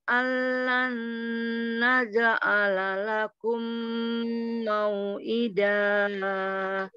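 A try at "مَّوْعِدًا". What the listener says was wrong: Koreksinya hukum mau'ida da mati wat saja, jangan dipanjangin. Dua saja sayang, mau'ida mati wat sayang.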